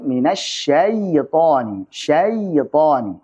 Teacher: Ada aliran-aliran suara maka Itu adalah konsekuensi sifat rakhawah dari huruf Ya Sukun